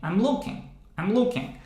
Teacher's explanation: the first syllable, the first word, in this case, is not stressed